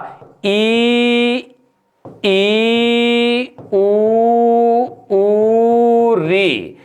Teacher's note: मुख लगभग हमारा बंद रहता है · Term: समृद्ध